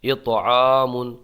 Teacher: طا میں قلقلہ ہوگا آواز پلٹ کے آئے گی اور عین کو ایک الف کھینچ کے پڑھیں گے اس لیے